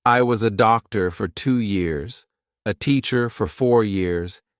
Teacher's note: it's just neutral nothing happens with the mouth nothing happens with the tongue